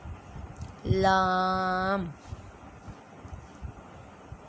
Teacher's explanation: یہ زبان کا کنارہ اور ضواحک کے ثنایا تک کے مسوڑوں سے ادا ہوتا ہے۔